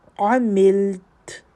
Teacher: شرری، را کے اوپر شد ہے تو اس میں تکرار ہے صفت میں، دیکھیں تو من شرری ما، الف مد، عملت، عین اور میم کو لام سے ملا کے، لام کو ہلانا نہیں اور تا کے اوپر رک جائیں، یہاں رک سکتی ہیں.